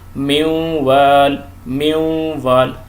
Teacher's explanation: چوتھی مثال دیکھیں، نون ساکنہ کے بعد واو آ گیا، من وال، من وال۔ ناک میں آواز بھی ساتھ میں نکالیں گے، غنہ کریں گے